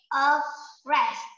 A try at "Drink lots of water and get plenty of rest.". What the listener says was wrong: That's right, rest. Good job.